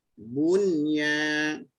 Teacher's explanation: bu saja muncung, nun jangan muncung, nun tu sakin balik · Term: nun sakin